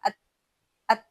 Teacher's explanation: अब जब आप अत अदा करेंगे तो आप देखेंगे कि आपकी जो जबान की नोक है वह ऊपर मसूड़ों को जाकर लग गई है। · اب جب ات ادا کریں گے تو آپ دیکھیں گے کہ آپ کی جو زبان کی نوک ہے وہ اوپر مسوڑوں کو جا کر لگ گئی ہے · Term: सिफत शिद्दत